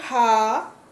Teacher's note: हा कंठ की तरह बोले जाने वाला वर्ण है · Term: कंठ वर्ण